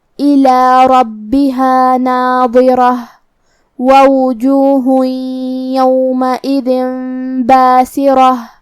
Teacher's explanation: ہم کلمت ناظرہ پہ رکیں گے تو تا پہ ہا سے رکیں گے، الی ربها ناظرہ ووجوہ یومئذ باسرہ۔